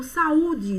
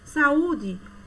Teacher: duas vogais em sílabas diferentes chamamos de hiato